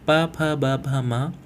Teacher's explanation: इसके अलावा उ और उ का उच्चारण भी ओष्ठ से ही किया जाता है। इसके उच्चारण में आपके दोनों ओठ आपस में टकराएंगे और होठों की सहायता ली जाती है।